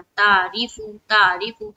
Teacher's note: और यहाँ पर आपने क्या मिस हो रहा है, आयन मिस हो जा रहा